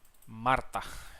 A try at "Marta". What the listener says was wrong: Marta. Well, don't exaggerate on the R, but it's good. Marta.